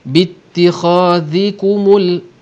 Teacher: Di sini ikhfa syafawi, anfusakum kita akan sentuhkan 2 bibir secara ringan, macam ikhfa, macam iqlab juga